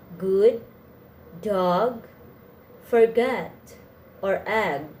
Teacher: made by stopping the air with the back of your tongue in your throat the go is a voice sound it has a voiceless counterpart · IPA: / g /